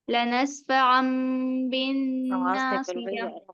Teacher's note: इखलाब का मतलब यानी बदलना है हमें, तनवीन और नून साकिन की आवाज को मीम से बदल कर पढ़ना है